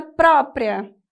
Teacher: o acento recai sobre a penúltima sílaba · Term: paroxítona